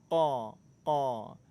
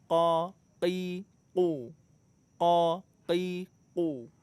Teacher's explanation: Huruf qaf makhrajnya pertemuan antara pangkal lidah dengan langit-langit lunak. Qa, qa. Huruf qaf sifatnya syiddah kuat, tapi nggak ada sifat hamasnya, nggak ada aliran udara.